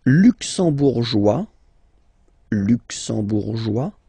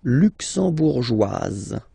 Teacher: It will be only in this Z sound, the difference between the masculine form and the feminine form